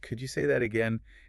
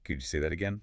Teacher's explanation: So, the correction is keep the tone friendly and rising at the end.